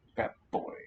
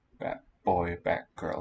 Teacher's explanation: what i hear at least in my own speech is a long k in batgirl and a long p in batboy